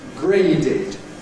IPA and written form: ˈgreɪdɪd (graded)